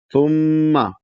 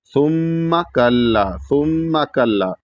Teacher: ثم میں جو میم پہ زبر ہے اس کو کھینچنا نہیں ہے کیونکہ وہاں الف نہیں ہے